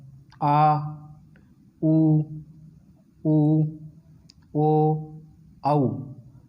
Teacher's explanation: जिन स्वरों के उच्चारण में जीभ का पीछे का भाग थोड़ा उठता है या सक्रिय रहता है उन स्वरों को पश्च स्वर कहते हैं।